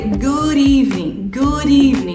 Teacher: você conecta o d com o e